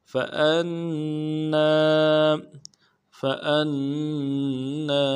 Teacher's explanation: نون کے اوپر تشدید ہے، زور دیں گے اور نون کے بعد الف مدہ ہے، ایک الف دال میں کھینچیں گے